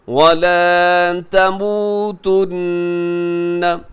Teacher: یہاں نون کے اوپر تشدید ہے، یہاں غنہ کیجیے گا